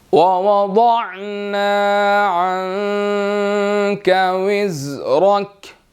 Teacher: عَنْكَ یہاں پر اخفا ہوگا، منہ میں ہم آواز کو لے کر جائیں گے